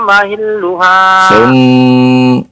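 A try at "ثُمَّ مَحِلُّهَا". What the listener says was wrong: Tasdidnya yang panjang Pak ya. Ya, summa mahilluha.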